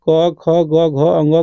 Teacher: जो भी ये क, ख, ग, घ, अंग का उच्चारण किससे होता है? कंठ से होता है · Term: कवर्ग